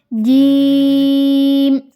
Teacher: जुबान के दरमियानी हिस्सा और बिल मुकाबिल ऊपर का तालू यानी जहां पे आपको जुबान का दरमियानी हिस्सा है और जो